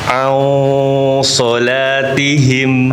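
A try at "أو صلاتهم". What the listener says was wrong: Nah, salah bacanya. Nah, au, bukan au. Au, bukan au. Nah, jangan monyong. Monyong. Au, ya. Au, ya.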